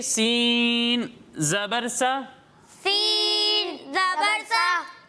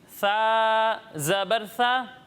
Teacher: جب ہم ثا کی ادائیگی کریں گے تو اس میں سیٹی کی آواز نہیں آئے گی